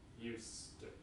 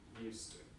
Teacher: So the z becomes a s.